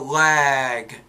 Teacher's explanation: notice how that vowel the duration of it is a little bit longer because of that voice consonant